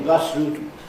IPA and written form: ˋbʌs ruːt (bus route)